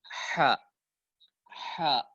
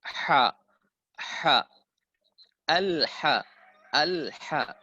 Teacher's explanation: Ha itu di mana makhrajnya? Pertengahan tenggorokan. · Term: huruf ha